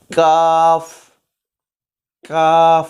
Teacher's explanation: नरम हिस्से से ज़रा सा हम आगे की तरफ आएंगे तो वहाँ सख्त हिस्सा है, तो वहाँ से काफ